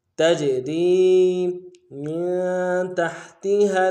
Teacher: جیم حروف قلقلہ میں سے قلقلہ جاری ہوگا · را کو یا کے ساتھ ملانا ہے، یا مدہ ایک الف میں کھینچیں گے